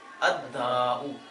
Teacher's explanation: دال شمسیہ میں سے ہے، اسی لام کو بھی دال کیا